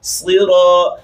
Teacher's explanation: کی ہوگی، صراط الذین انعمت علیہم، صراط الذین انعمت علیہم، سرا، یہاں پر انہوں نے سین پڑھا ہے، سین نہیں صاد ہے، اس کی مٹائی پیدا کرنی ہے